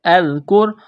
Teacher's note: فَاذْكُرُونِي أَذْكُرْكُمْ، حمزہ ذال زبر اذ، کاف را پیش کر، اذکر، یہاں را ساکن ہے، را ساکن ہو تو پہلے والے حرف کی حرکت کو دیکھنا ہے، کاف کے اوپر پیش ہے تو را کو موٹا کرنا ہے